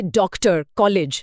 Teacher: यह आ और ओ के बीच की ध्वनि है।